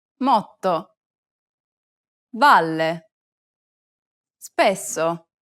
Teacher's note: double consonants are actually pronounced for a longer duration in Italian than they are in English. To solve this problem, try to lengthen the sound a little bit longer than you would in English.